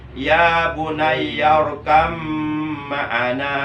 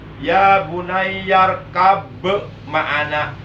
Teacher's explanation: Ba-nya jangan dikokolahkan, karena di depannya ada mim, ada mahraj yang berdekatan dengan ba.